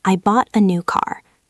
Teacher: Notice how the words I and uh are very fast and quiet. They are squeezed in between the big beats. · The important words are bought, new, and car. Those are the beats. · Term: drum beats